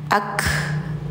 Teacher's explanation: Ka ada nafas mengalir. Ka ini sifatnya hamas teman-teman ya. Ak. Jadi enggak ak tapi ak.